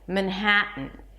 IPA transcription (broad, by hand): mənˈhætən